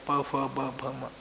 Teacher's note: प वर्ग के उच्चारण में ओट पहले बंद पूरे बंद हो जाते हैं और फिर खुल जाते हैं